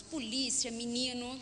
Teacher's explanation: caracterizam o nosso falar primeiro deles Tecnicamente alteamento da VPR tônica nós temos a pronúncia I ao invés de e u em vez de o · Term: alteamento da vogal pretônica